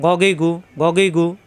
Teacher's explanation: কন্ঠনালি শেষ অংশ থেকে গইন